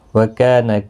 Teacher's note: وکان کا الف مدہ ہے، ایک الف کی مقدار کے برابر کھینچ کر پڑھیں گے